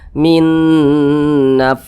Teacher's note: suaranya itu kita tahan kita panjangkan sejenak panjangnya gunah atau panjangnya dengungan itu dua harakat